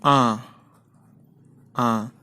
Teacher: এই স্বর ধ্বনিটা উচ্চারণ করতে গেলে আমরা আমাদের মুখ থেকে যে বাতাস বেরোবে তার থেকে নাক দিয়ে বেশি বাতাস বেরিয়ে আসে তাই একে বলে সানুনাসিক স্বর আবার আসি প্রথমের যেটা স্বরণী একেবারে